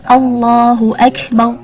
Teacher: Dibaca tafkhim atau tebal ketika berada di awal susunan kalimat dengan contoh Allahu Akbar.